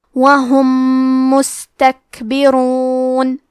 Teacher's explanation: کلمت وہم کے آخری میں میم ساکن ہے، پھر حرف المیم ہے کلمت مستکبرون، یہاں حکم ہے ادغام متماثلین صغیر مطلب ہم میم ساکن کو دوسرے میم میں ملا کے ایک ہی میم غنہ اور تشدید کے ساتھ پڑھیں گے